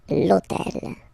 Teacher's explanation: this hôtel, okay, because it starts with H, but remember that in French we don't pronounce H, okay, so basically the first sound of the word is the vowel O , okay, so for the same reason, needs to disappear, l'hôtel,